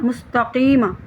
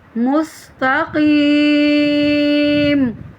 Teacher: میم پر حرکت پڑھ دی، زبر پڑھ دی